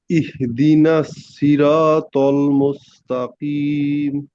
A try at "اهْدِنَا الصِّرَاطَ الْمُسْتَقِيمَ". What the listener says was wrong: কফটা শক্ত হবে, এই যে কফটা শক্ত করে। ইহি ইহি হয়ে যাচ্ছে, হাঁটাতে ব্রেক ধরতে হবে, ইহ ইহদি ইহদি, তাড়াতাড়ি দিছেন।